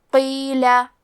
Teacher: یہ مد جائز منفصل ہے تو ہم اپنی آواز 2 سے 4 مد کے برابر لمبی کریں گے. کلمت قیلہ میں حرف القاف کی ادائیگی زبان کے جڑ اور تالوں کے نرم حصے سے ہے. قاف حروف تفخیم میں سے ہے تو ہم یہ حرف کو موٹی آواز میں پڑھیں گے.